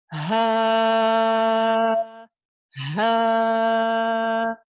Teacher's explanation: J'ai un ha qui est au niveau des cordes vocales, et puis j'étire le son, et ça, j'étire la fatha, et ça me donne un alif.